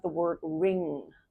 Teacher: the ending of the word ring right so it's kind of you'll feel that nasal n and then a little bit of that g in the back of your um tongue or mouth